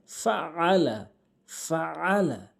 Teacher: আইনটি হলকের মাঝখান থেকে উচ্চারণ করতে হবে